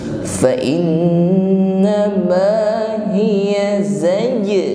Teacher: Namun huruf zai ini adalah shafir, ya, ada suara desis. Okay? Fa innama hiya nah, sebelum za terucap, ini shafirnya, desisnya sudah tampak za.